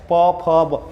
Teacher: दोनों ओष्ठ एक दूसरे को छू रहे हैं